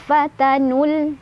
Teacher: fatanu itu waw sama alifnya tidak dibaca, jadi kita langsung bacanya ke lam. Jadi bukan fatanul dipanjangin dulu, enggak.